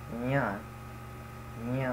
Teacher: which is like the way you say ya in English, except you breathe a bit air in your nose, like nasalize it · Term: palatal nasal